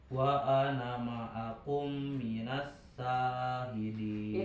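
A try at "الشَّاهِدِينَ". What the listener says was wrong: itu sin besar ya jadi ada tapasy minas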